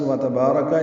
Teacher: واو تا کو جلدی پڑھنا ہے، با کو لمبا کرنا ہے کیونکہ آگے الف ہے، تو الف مدہ ہو گیا، 2 حرکات لمبا ہے. را پر پڑھیں گے، جلدی پڑھیں گے.